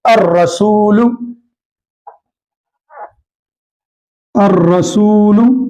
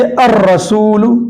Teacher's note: ان حروف سے پہلے یعنی حروف شمسی سے پہلے اگر الف لام آئے تو لام نہیں پڑھا جائے گا بلکہ حرف شمسی کو تشدید دے کر پڑھیں گے، جیسے الرسول، الرسول، اب آپ دیکھیں الرسول میں حرف شمسی میں سے را آ رہا ہے، را یہاں پر ہے، حرف شمسی میں سے را آ رہا ہے۔